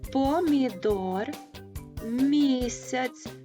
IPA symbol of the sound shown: м´